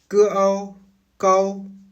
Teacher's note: On referme progressivement la mâchoire tout en arrondissant les lèvres pour glisser vers le O.